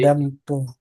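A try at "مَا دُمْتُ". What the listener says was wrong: ah kalau itu kan dam tuh. Nah ini dum tuh. Nah, dum bukan dam ya. Ya, madum tuh. Karena kan bentuknya merupakan fathah semua.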